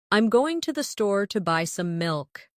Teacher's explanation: Notice how certain words are stressed: going, store, buy, milk.